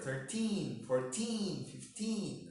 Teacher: stress is in the syllable teen. So 13. Teen is longer.